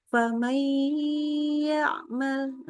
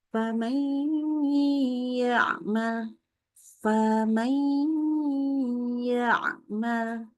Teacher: Berikan gunnahnya. Tahan dengan dengungan yang sempurna. 3 harokat minimal.